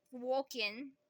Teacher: And then the ing becomes an in.